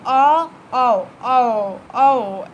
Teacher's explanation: कंठ और ओष्ठ मिलके कंठोष्ठ बनेंगे। और अ और ओ एक साथ बोल के देखिए, अ औ औ औ, इस तरीके से आपको आवाज़ सुनाई देगी।